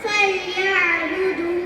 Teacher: என்னுடைய பிறப்பிடம் மேல் பற்கள் கீழ் உதடின் உட்புறத்தில் இணையும் போது நான் உருவாகிறேன்.